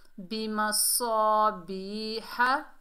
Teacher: और या साकिन से पहले ज़ेर है, या मद्दा है, एक अलिफ की मिक़दार खींच कर पढ़ेंगे, बी। और हा को हलक के दरमियान से अदा करेंगे, ये बड़ी हा है